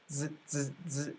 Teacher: feel your voice box, z, z, z, it should buzz the whole time.